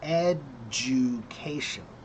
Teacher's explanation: So the du is like a ju sound.